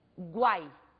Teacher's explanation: o U constitui uma semivogal, o A numa vogal, que é o som pronunciado com maior intensidade, e o I, uma outra semivogal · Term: tritongo